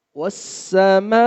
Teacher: والسماء، 3 سے 5 الف لمبا کرنا ہے اس کو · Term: بڑی مد